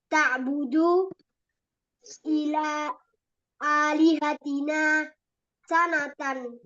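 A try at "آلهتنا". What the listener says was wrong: Alihatina. Fathah, Mas. Ta'budu alihatana sanatan.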